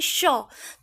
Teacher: जैसे ही आप बोलते हैं श, तो एक रगड़ का एहसास वायु से मुख के अंदर होता है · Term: ऊष्म वर्ण